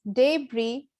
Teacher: in the british english where they clearly lay stress on the first syllable